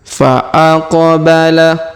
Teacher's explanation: Huruf Qaf berharokat sukun maka kita pantulkan